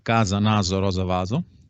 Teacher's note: la pronuncia Con la s Sonora se ha generalizado